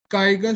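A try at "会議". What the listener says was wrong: काइगा कहाँ लिखा है बच्चा?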